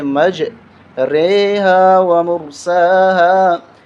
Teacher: اس را کو مجہول طریقے سے پڑھا جاتا ہے، اور اس کا نام ہے کھڑی امالہ زیر۔